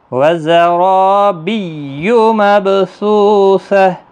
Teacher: زا سختی کے ساتھ پڑھا جائے گا، را الف مدہ ہے، را پور بھی پڑھا جائے گا